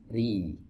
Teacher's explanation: huruf ro di sini dibaca tipis ri. Nah, untuk menyempurnakan ketipisan huruf ro sama seperti huruf sin ditarik ya.